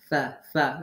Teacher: সোয়াদ এবং সিন এর ন্যায় তাকে কঠিন স্বরে পড়া যাবে না। সা সা সবসময় জিহ্বার আগে নরম হবে।